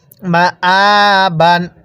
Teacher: কিভাবে পড়বো মা আবান দেখুন হামজা এর উপর খাড়া চিহ্ন এজন্য আমরা হামজাটা এক আলিফ টেনে পড়বো